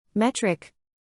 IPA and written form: ˈmɛt.rɪk (metric)